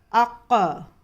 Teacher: قلقلے میں مخرج کی آواز ٹکر کھا کر واپس آتی ہے